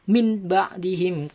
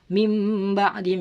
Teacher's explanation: Jadi seakan-akan nun sukun itu berbunyi mim